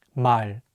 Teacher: In Korean, the L sound is much lighter without any tension.